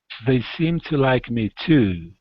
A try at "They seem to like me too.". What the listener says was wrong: Now, the only difference there, though, is don't put a whole lot of pressure on the end of the word. You're focusing on the end. Okay, put the focus on the beginning, and it's light on the end. So it's to.